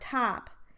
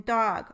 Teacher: Listen how the T in top sounds quite puffy compared to the D in dog, or the voiced stop. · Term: aspiration